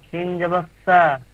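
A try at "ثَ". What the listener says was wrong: সিন কেন হবে? সিন নয় ওটা, সিন নয় ওটা।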